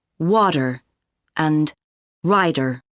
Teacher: in North American English T often sounds like duh in the middle of words